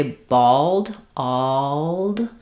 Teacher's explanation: I have kind of an a slightly rounded shape for my vowel before my L. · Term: ah vowel